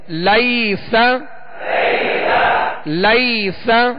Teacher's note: یہاں یا لین ہے، اسے نرمی کے ساتھ بغیر کھینچے بغیر جھٹکا دیے معروف پڑھیں گے